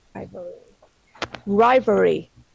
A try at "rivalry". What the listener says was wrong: Not rivalry, rivalry. You've got to get that ul in. Rivalry. Yeah, it's a bit of a tongue twister for you.